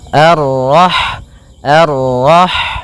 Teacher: Kemudian pada lafal rah di sini ada huruf ha, ha yang berharakat sukun, dan sifat ha itu yang paling mencolok adalah sifat hamsnya, yaitu mengalirnya nafas ketika kita membacanya